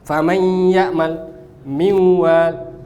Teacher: Nakis gunnahnya masih tetap ada.